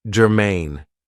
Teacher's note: this is two syllables and the stress is on the second syllable · So, the first adjective I have for you is germane. Now, this is 2 syllables, and the stress is on the second syllable, germane. It means that something is relevant, that it is closely related to something else.